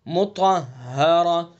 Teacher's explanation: طا کو پر پڑھیں گے چونکہ حروف مستعلیہ میں سے، اور طا کے بعد ہا کے اوپر تشدید ہے تو اس لیے دھیان سے پڑھیں گے.